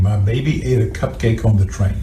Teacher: Her voice is very strained. It's very rough. We hear that um there's a lot of air escaping through the nose. She sounds a little bit hyper nasal. · We hear that um there's a lot of air escaping through the nose. She sounds a little bit hyper nasal. Her articulation is also imprecise.